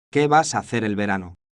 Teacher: Nota la entonación ascendente al final, típica de las preguntas en español.